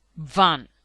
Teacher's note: V. Voiced labiodental fricative. Van.